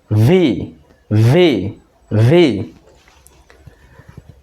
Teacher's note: ভি উচ্চারণের সময় নিচের ঠোঁটটা উপরের দাঁতের সাথে লাগাবো, বাতাস বের হয়ে যাবে।